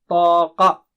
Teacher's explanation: qa is thick and high